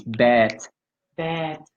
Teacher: it's not one beat it's like two beats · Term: long vowel